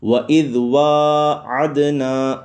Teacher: یہ دال حروف قلقلہ میں سے ہے، ساکن آئے یہ جب ساکن ہو جائے تو اس وقت خوب جماؤ کرتے ہیں، تو خوب قلقلہ کرتے ہیں، جنبش پیدا ہوتی ہے، اس وجہ سے عد یہ آواز واپس پلٹ کے آئے گی، اس کو جنبش کہتے ہیں۔